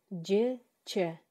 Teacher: тилибиздин ортоңку бөлүгү үстүңкү таңдайга тийген абалда болот. Өпкөдөн чыгып келе жаткан аба ошол жерде тоскоолдукка учурайт. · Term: орточулдар